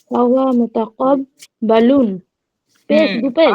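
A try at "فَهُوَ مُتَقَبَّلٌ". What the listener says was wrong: ফাহুয়া জবর হবে, ফাহুয়া মুতাকব্বালুন।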